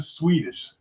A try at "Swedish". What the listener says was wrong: Swedish. No, you can't say the W if you're talking about Swedish.